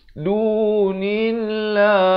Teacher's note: Lafz jalalah dibaca nipis di sini kerana datang sebelumnya baris kasrah dan 2 harakat.